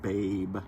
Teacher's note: So if I pronounce the word babe, for instance, babe has a diphthong as its vowel, a. And if you take the first part of that in my dialect of North American English, that's really close to an epsilon iota